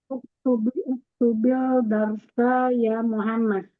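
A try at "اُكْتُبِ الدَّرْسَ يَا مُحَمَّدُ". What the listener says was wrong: Nah, kalau uktubil itu berarti dia al-qamariyah. Ini berarti asyamsiyah. Ketemu huruf dal. Uktubid dars. Uktubid dars. Ingat ya, ada tasdidnya berarti dia sambung.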